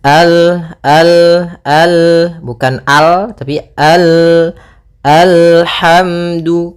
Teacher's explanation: Maka kita baca dengan al, kemudian al, hati-hati dalam lafal lam, sempurnakan makhraj daripada lam, ujung lidah naik melekat dengan langit-langit atas